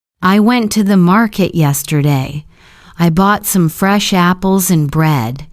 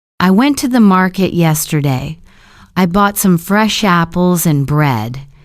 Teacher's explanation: Notice how went, market, bought, fresh apples, and bread are stressed.